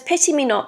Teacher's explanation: the stress rather than being placed on the second syllable is placed on the first so breaking the iambic Rhythm straight away creates um an uneasy · So even though we know that it's a sonnet, we know that it's going to be written in iambic pentameter, we have here what's called a trochaic substitution, and that means that the stress, rather than being placed on the second syllable, is placed on the first.